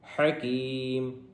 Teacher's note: انت العلیم الحکیم، ابھی نون کے اوپر ساکن ہے جس کی وجہ سے یہاں پہ اخفا ہوگا، اور آگے عین ہے، علیم، عین، حکیم، ہا ہے حلق والی، اس کو حلق سے نکالیں گے